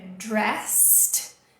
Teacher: não tem som de ED aqui, é dressed, terminando com ST, dressed, já vai conectar o T com esse A, dressed as a nun, então vestido como uma freira, is trying to persuade a soul, está tentando persuadir uma alma, soul, alma, to sign a document, to sign a document.